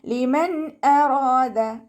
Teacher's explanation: ലിമൻ അറാദ നൂൻ സാക്കിനയ്ക്ക് ശേഷം ഇദ്ഹാറിൻ്റെ ലെറ്ററായിട്ടുള്ള ഹംസ വന്നു. നൂൻ സാക്കിനയെ വ്യക്തമാക്കി മണിക്കാതെ ഓതുക, നൂനിൻ്റെ സൗണ്ടിനെ വ്യക്തമായിട്ട് കേൾപ്പിക്കുക കേട്ടോ